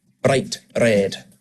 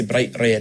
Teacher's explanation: It's much more common to roll the R just for one roll. It's called a tapped R.